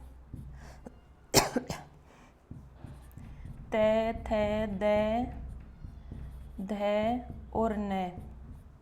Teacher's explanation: तो तय का उच्चारण करने के लिए जिह्वा को दांतों से स्पर्श करना ही होगा।